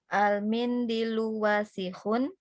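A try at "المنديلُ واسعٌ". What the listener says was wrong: Wasihun, nggak ada yang panjang. Mindilu, D-nya panjang.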